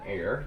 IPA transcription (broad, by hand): er